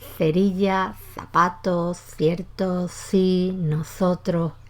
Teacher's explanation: pronuncia todo con un sonido dental bajo post dental, próximo a la articulación entre los dientes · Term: ceceo